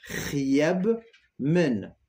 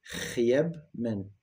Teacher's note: Le R raclé au fond de la gorge